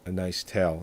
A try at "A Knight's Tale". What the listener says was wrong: Knight's Tale, not A Nice Tale. I know, but you gotta say it right. It sounded like Nice Tale.